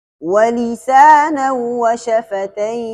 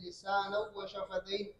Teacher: خلف کے لیے لام اور را کے طرح یا اور واو میں بھی ادغام تام ہوتا ہے، یعنی غنہ نہیں ہوتا ہے